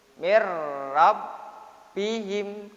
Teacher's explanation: Ini idgham syafawi ya. Rabbihim, kalau ada huruf-huruf yang disabdu dia agak ditekan ya, ditekan kalau bacaannya ya. Agak ditekan karena hurufnya berganda ya.